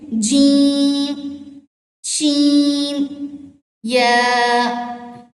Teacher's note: जीम, शीन और या की अदायगी क्या है कि आपकी जुबान का बीच वाला जो हिस्सा है, यानी मिड से आपकी जुबान ऊपर ही, बिलमुकाबिल ऊपर ही तालु के साथ में टच हो, यानी जुबान का बीच भी और तालु का बीच भी दोनों आपस में टच हो, तो ये वर्ड अदा होते हैं जीम, शीन, या।